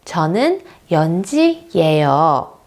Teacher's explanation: If I'm stating something, for example, my name, I will say 저는 연지예요. And the intonation will go down.